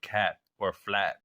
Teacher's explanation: you end a syllable with a t sound they consider that like a weaker T sound compared to the true T